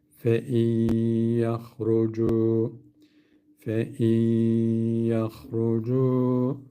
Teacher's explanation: Fein demiyoruz. Hemen nunu kapattık. Y'nin üzerine bir şedde verdik. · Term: idgam meal gunne